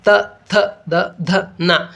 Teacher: ಇವುಗಳು ಹುಟ್ಟುವ ಸ್ಥಳ ಯಾವುದು ಅಂದ್ರೆ ಹಲ್ಲುಗಳ ಬಳಿ ಹಾಗಾಗಿ ಇವುಗಳನ್ನ ದಂತಾಕ್ಷರಗಳು ಅಂತ ಹೇಳಿ ಕರೆಯುವುದುಂಟು ನೋಡಿ ಇಲ್ಲಿ ನಮಗೆ ಈ ಅಕ್ಷರಗಳನ್ನು ಉಚ್ಚಾರ ಮಾಡಲಿಕ್ಕೆ ನಾಲಿಗೆಯು ಬಂದು ಹಲ್ಲುಗಳಿಗೆ ಬಡಿದಾಗ · ದಂತಾಕ್ಷರಗಳು ಅಂತ ಹೇಳಿ ಕರೆಯುವುದುಂಟು ನೋಡಿ ಇಲ್ಲಿ ನಮಗೆ ಈ ಅಕ್ಷರಗಳನ್ನು ಉಚ್ಚಾರ ಮಾಡಲಿಕ್ಕೆ ನಾಲಿಗೆಯು ಬಂದು ಹಲ್ಲುಗಳಿಗೆ ಬಡಿದಾಗ ಈ ಅಕ್ಷರಗಳು ಉತ್ಪತ್ತಿಯಾಗುವುದುಂಟು